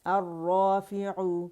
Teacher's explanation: الرافع، رو کی آواز آئے گی، را نہیں ہوگا